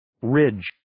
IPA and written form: rɪdʒ (Ridge)